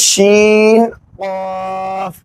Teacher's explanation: یہ قاف جو ہے زبان کی جڑ اوپر تالو میں لگائیں گے